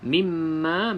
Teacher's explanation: mim yang bersabdu sama seperti Nun yang bersabdu wajibul ghunah maka wajib kita dengung dua harakat